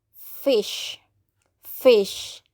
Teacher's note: for voiceless of labiodental there is f sound